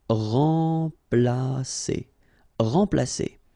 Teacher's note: So M together, and after that you've got a consonant, so it will be like a nasal, so like en.